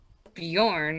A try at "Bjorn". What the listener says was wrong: just don't pronounce the J. It's not Bjorn.